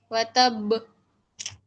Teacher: वतब के कर नहीं रुकना, वहां पर डबल साउंड आना चाहिए ना। कलकला कर रहे हैं हम।